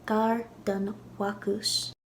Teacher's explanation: So an example would be the bakery, which is a masculine noun, bakus, but when you put it after gar-dun and say near the bakery, gar-dun-wakus, you lenite the B. B turns to W.